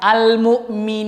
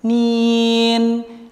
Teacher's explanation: ketika nun tersebut berharokat kasroh kemudian bertemu dengan ya mad yang menyebabkan panjangnya bacaan tersebut, itu bacaannya keluarnya langsung dari rongga tenggorokan